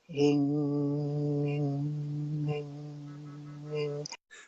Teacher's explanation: So you're actually saying ing by opening and closing the back of your throat. · And one of them is a very simple sound. It's the NG sound closing the back of your throat.